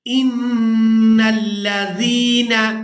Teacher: نون مشدد پر غنہ کریں گے اور نون کو دوسری دفعہ اس کی حرکت یعنی زبر کے ساتھ لام مشدد کے ساتھ ملائیں گے